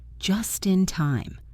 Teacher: Just in becomes Justin, like the name Justin.